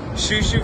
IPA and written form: ʃoʊˈʃoʊn (Shoshone Falls)